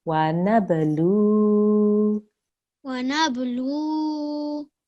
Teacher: we have qalqala here, so we have a jerk on the ba, and then a vaw mother here, so we have to elongate for 2 seconds.